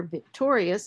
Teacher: the stress shifts and the stress is on that second syllable tour